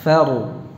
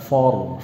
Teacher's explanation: Kemudian yang perlu dibenahi ra-nya, faru ya, tebal. Fa-nya tipis, fa-nya tipis, ra-nya tebal ya. Faru. Bukan for, faru ya.